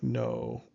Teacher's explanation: I suspect that it doesn't have quite as much of the oo at the end as we tend to in English. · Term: long O